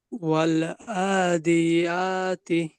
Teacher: আইন খাড়া জবর মদের হরকত এক আলিফ টেনে পড়তে হবে।